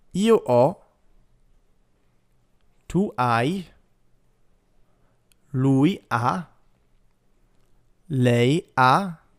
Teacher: In all cases, we're not pronouncing a single H. The H, as we said before, is always silent.